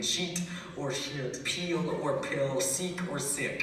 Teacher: Basically, there's no difference between sheet or shit, peel or pill, seek or sick.